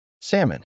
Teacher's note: Notice there's no L sound anywhere in there. It goes straight from the A to the M. Salmon. Remember, ignore that L completely. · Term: silent